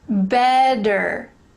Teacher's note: these two t's they're changing to a d sound in american